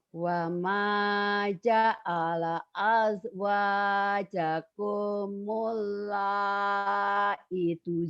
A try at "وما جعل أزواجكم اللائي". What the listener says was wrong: I-nya panjang. Lai.